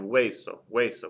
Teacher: That ends in a vowel. The stress is over the E on hueso